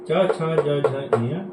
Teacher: क ख ग घ अंग क वर्ग में आते हैं, ये कंठ से बोले जाते हैं। च छ ज झ ञ च वर्ग हैं जो तालब से बोले जाते हैं